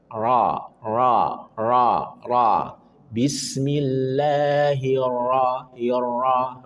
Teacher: nanti dilatih untuk menebalkan huruf ra dan kurangi getarannya. Karena ra punya sifat takrir, tapi sekali saja.